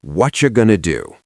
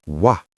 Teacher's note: The what loses its T, the R is completely deleted.